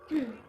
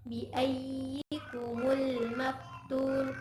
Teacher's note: ya tasydid dibunyikan dengan suara lebih tinggi